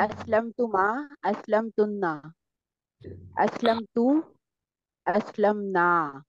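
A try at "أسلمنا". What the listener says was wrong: शाबाश, very good.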